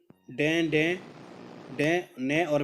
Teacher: द्वार बंद करके खोला जाता है किंतु साथ ही नासिका विवर भी खुला रहता है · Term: अनुनासिक